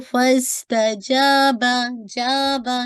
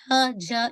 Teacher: जीम शीन या का जो आर्टिकुलेशन पॉइंट है मिडिल ऑफ द टंग, आपकी ऊपर की अपर पैलेट से लगती है